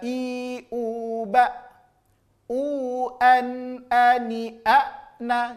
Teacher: A dia murni dari pangkal tenggorokan. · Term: hamzah